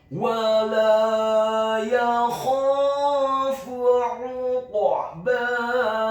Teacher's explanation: huruf qaf-nya dibaca tafkhim tebal sukun dan wajib untuk diqalqalahkan atau dipantulkan · huruf ain-nya ditekankan keluar dari tenggorokan bagian tengah dhammah 1 harokat.